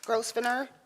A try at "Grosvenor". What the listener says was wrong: Okay, it's my understanding Mr. Grosvenor's name is the S is silent.